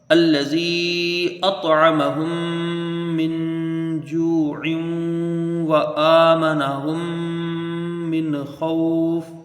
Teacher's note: من جوع یہاں پر غنہ کر کے پڑھنا ہے، بس ادغام مال غنہ ہوگا